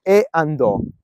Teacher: le due parole Una all la vocale l'altra inizia col vocale queste due vocali è come se si unissero e quindi contano una sola sillaba quindi e andò e a contano come una sola sillaba non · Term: sinalefe